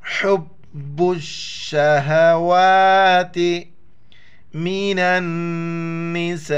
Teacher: اس کو کھینچنا ہے، تا زیر تے، حب الشہوات من النساء، نون کو نون کے ساتھ ملائیں گے اور غنہ کریں گے ، جیسے یہاں پر بتلا دیا کہ نون پر شد ہو